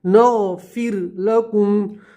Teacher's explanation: را کو باریک پڑھیں گے، ٹھیک ہے، پتلا پڑھیں گے